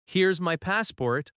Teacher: But if you say, "Here's my passport." with a gentle falling tone, it sounds friendly and cooperative